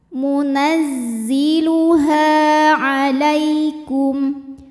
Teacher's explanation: Ha hukumnya adalah mad tabi'i zahiri, sebab ada alif yang sebelumnya didahului harokat fathah. Maka huruf ha kita panjangkan 2 harokat.